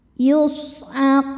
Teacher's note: Sodnya berdesis ya, punya sifat sofir. Yus'aqun. Saat berhenti di kun hukumnya adalah mad arid li sukun karena mad tabi'i bertemu dengan huruf yang disukunkan karena waqaf.